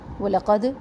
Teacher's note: وَلَقَدْ سنگل حرکات ہے، قوف کو موٹا پڑھنا ہے اور دال کے اوپر کلکلہ کرنا ہے، مضبوط کلکلہ